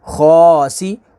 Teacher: خوا کو پر پڑھیں گے اور کھڑی حرکات کو کھینچیں گے